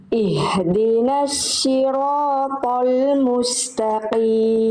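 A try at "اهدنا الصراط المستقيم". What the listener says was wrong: Oke, tinggal sempurnakan huruf shad kasrohnya saja. Bunda, huruf shad itu huruf tebal kan? Huruf tebal bagaimana biar dia bisa tebal? Diangkat pangkal lidahnya ya. Jadi tadi bunda yang sebelumnya bunda lafalkan sebelumnya tadi pada saat baca, itu yang bunda lafalkan jadinya huruf shin. Kalau huruf shin itu yang diangkat tengah lidah. Nah, yang kita jadi titik tumpu tebal itu bukan tengah lidah, tapi pangkal lidah, lebih dalam lagi.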